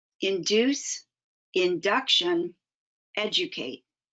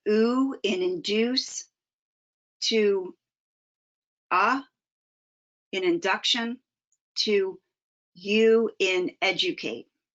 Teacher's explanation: The vowel sound shifts from ew in induce to Ah induction to u in educate.